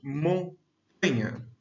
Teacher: Nós percebemos quando falamos montanha que o tan, a sílaba tan, ou tá, se destaca. Dessa forma, o tá é a sílaba tônica.